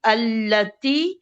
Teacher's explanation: अब ये 8वीं, ये शमसी वर्ड है तो हमजतुल वसल पे फतह लगेगी, और लाम को 2 दफा पढ़ा जाएगा, ये चलती हुई आवाज है। और ता के नीचे कसरा है और या है तो ये 2 काउंट की मद बनेगी, अल्लती।